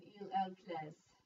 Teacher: S is pronounced like a Z. The ENT is not pronounced